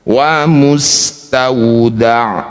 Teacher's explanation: ain punya sifat tawassut antara rokhawah dan syiddah, antara mengalir dan ditahan di tengah-tengah.